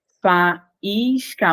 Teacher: Faísca, o A e o I estão separados. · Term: hiato